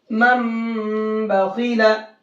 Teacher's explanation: تنوین یا نون ساکن کے بعد با، اس کا صرف ایک لفظ ہے با. ٹھیک ہے، تو با آئے تو نون کو میم سے بدل کر غنہ اور اخفے کے ساتھ پڑھیں گے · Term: اقلاب